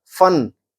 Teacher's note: ये जो फ है ये दंत ओष्ठ से बोला जाता है, दांत और ओष्ठ से